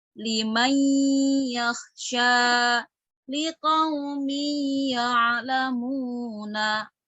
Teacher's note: nun sukun ini bertemu dengan huruf ya, maka disebut dengan idgham bi gunnah atau idgham yang disertai dengan gunnah. Maka bacanya itu harus dengung ya, didengungkan karena ada gunnahnya.